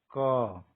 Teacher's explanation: इसका अर्थ ये है कि जब कभी भी हम व्यंजन वर्णों का उच्चारण करते हैं, मान लीजिए हम क कह रहे हैं, तो जब क कहते हैं तो केवल क नहीं कहते, उसके साथ अ ध्वनि जुड़ी होती है। आप जब किसी व्यंजन को बोल के लंबा खींचेंगे, जैसे क, तो शुरुआत क से होती है लेकिन वो खत्म अ पे होता है। क, अ की ध्वनि आने लगती है।